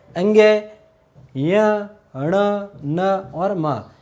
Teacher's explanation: वे व्यंजन जिनके उच्चारण में जो वायु का मुख्य अंश है वो नाक से निकलता है, नासिका से निकलता है, उसे हम क्या कहेंगे, नासिक व्यंजन।